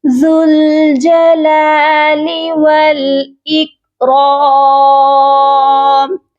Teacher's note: ذال کو ڈائریکٹ لام کے ساتھ ملائیں گے. یہاں پر دیکھیے واو بھی ہے الف بھی ہے، یہ دونوں لیٹرز نہیں پڑھے جائیں گے.